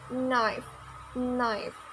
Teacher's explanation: on the left side and it sounds more like um and your tongue touching the ridge behind the teeth on the roof of the mouth